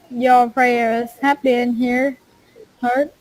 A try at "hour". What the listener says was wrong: Just one word is kind of tricky. That's the word hour. The H is silent, okay? So then it's like hour. Okay, no H. And it's not hour, but hour.